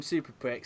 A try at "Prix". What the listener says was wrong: Pricks or prey? I don't think you say it pricks, do you?